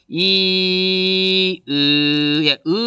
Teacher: 으 발음하면 자연스럽게 혀가 뒤로 당겨지죠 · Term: 후설